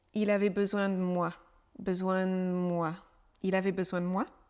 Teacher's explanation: le D de de est très peu prononcé